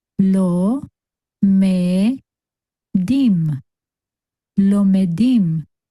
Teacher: that Shva is vocal, meaning it adds the E sound to the base sound of that letter.